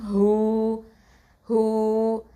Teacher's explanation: ஹூ அப்படிங்கிறது வந்து அக்கசல் ஹல்க்கு